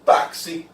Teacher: X, com som de K mais S. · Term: dífonos